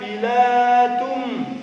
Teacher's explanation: tanwin bertemu dengan huruf mim maka bacaannya harus berdengung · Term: Idgham bihunah